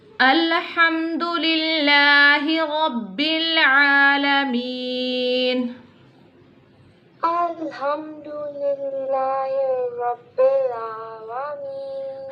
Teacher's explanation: Ha pronounced from the middle part of throat.